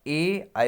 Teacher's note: देखिए कंठोष्ठ ध्वनि उन्हें कहते हैं जो कंठ तालु से उच्चारित संयुक्त होते हैं, यानी कंठ से भी हो और तालु से, उन्हें क्या है, कंठ तालव्य कहते हैं, ठीक है, संयुक्त कंठ तालव्य स्वर।